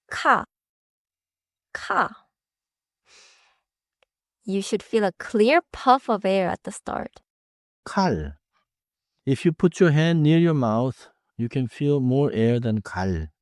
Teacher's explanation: You should feel a clear puff of air at the start. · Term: aspirated